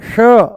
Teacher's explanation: मूर्धा ऊपर से बोला जाता है, श श, जीभ को थोड़ा सा ऊपर घुमा करके तालू से लगा करके बोला जाता है श।